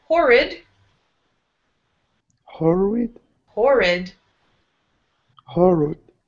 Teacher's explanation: first syllable is going to be strong, and then in the second syllable with this I, the letter I, it's an I sound here.